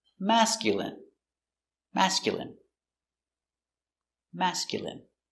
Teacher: stress on first syllable mask